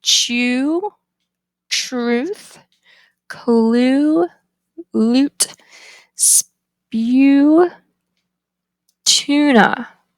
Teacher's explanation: it's extremely high so the tongue is in an extremely high back position · The tongue height is high, back, rounded, see how my lips are rounded, and tense. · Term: lowercase u